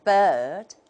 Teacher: if we take the British model, we can hear a very clear long vowel